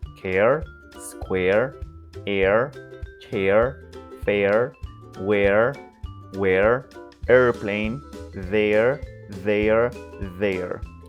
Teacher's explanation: So all of them have a soft rhotic ending.